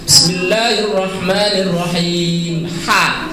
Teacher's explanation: Kalau ha itu kan di tengah-tengah antara ka sama ha.